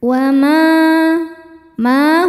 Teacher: sebab ada alif didahului harakat fathah cara bacanya panjang dua harakat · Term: mad thobi'i zohiri